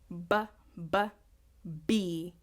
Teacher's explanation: Can you hear the blockage? The blockage is coming from the lips.